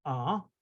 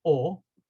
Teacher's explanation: The Kamatz, the Sfardim say ah, the Ashkenazim say o